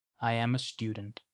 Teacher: Монгол хэлтнүүдийн гаргадаг нэг түгээмэл алдаа бол англиар мэдэгдэл хэлэхдээ ч дууны өнгөө өсгөх явдал юм.